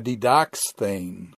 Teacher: So, for example, didask form, when you add the theta eta, becomes a didaxthane. The kappa goes to a ki before the theta eta.